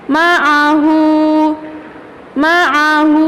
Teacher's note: Dhammah tegak dibaca panjang 2 harokat.